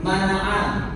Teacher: Nun sukun bertemu dengan mim. Maka karena dimasukkan menjadi mana'an. Nah hanya 2 harokat.